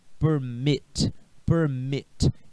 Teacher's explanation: a pronúncia não está na sílaba per, está na sílaba mit.